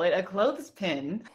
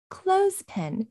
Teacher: Now, she was speaking very carefully. She actually pronounced the TH in clothespin.